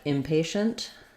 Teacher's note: And then in something like impatient, again, my main stress is going to be on the patient, but I may have some secondary stress, a little more length on im.